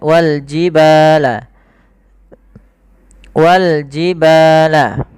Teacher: Kemudian pada lafal ba ada mad tabi'i, panjangnya 2 harakat.